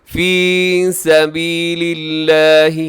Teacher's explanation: لفظ اللہ باریک ہے، اس سے پہلے لام کے نیچے زیر ہے